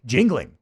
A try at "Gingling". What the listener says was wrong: No, jingling would be a J.